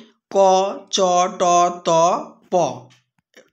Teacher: দেখো অঘোষ অথচ অল্পপ্রাণ ধ্বনি